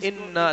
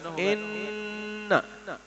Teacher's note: ان لمبا نہیں کرنا، یہاں صرف غنہ ہوگا ان. دیکھیں جو پہلا ہم نے لفظ پڑھا ہے اس سورت کا، جو پہلا لفظ ہے اس میں ہم نے ان لمبا بھی کیا تھا نا، اس میں نہیں کریں گے.